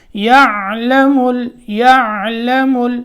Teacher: یہاں خیال رکھنا ہے کہ عین ساکن میں قلقلے کی آواز نہ آئے ، کیونکہ یہاں اکثر و بیشتر یہ غلطی ہوتی ہے کہ